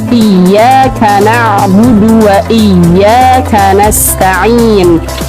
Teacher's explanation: Perhatikan di situ ada ya bertasydid. Jangan sampai kita membacanya seolah-olah tidak ada tasydidnya.